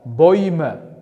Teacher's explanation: Bu diftongimiz ham eu o'qilganligi uchun bu diftongda ham buni oi deb talaffuz qilishimiz kerak. Chunki bu bilan buning o'qilishi bir xil, lekin ko'rinishi har xil.